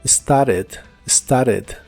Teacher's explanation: la puedes pronunciar sin la t en inglés americano solo started started y usaremos los verbos ser y estar que